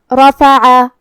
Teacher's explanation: حرف العین کی ادائیگی حلق کے درمیان والی حصے سے ہے تو ہمیں عین کو وہیں سے پڑھنا ہے.